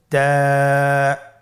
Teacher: তা হরফটি বারিক হরফ এবং এক আলিফ টেনে পড়তে হবে